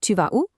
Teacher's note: It just relies on raising your voice at the end